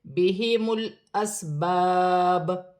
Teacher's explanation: وقف کی صورت میں پیش گر جائے گی اور با ساکن ہو جائے گی۔ وقف کی صورت میں با میں تھوڑا قلقلہ پیدا ہوگا کیونکہ با حروف قلقلہ میں سے ہے